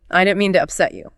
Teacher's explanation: Like if you accidentally bump into someone and say, "Oh, I didn't mean to upset you." Right. A standard American speaker might put the main stress on upset and maybe you. "I didn't mean to upset you." Right.